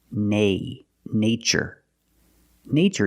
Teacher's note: in the first word we use the long a like day and say